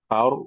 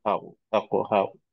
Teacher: এটা জবরের পরে র সাকিন আসছে, এই রটা মোটা করে পড়তে হবে